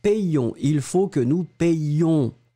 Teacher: Et vraiment, vraiment, vous insistez sur le ion.